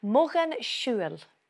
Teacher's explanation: when it's in the genitive form, for example, mogan siúil, ways of travelling, mogan siúil, the L sound becomes a slender L, mogan siúil.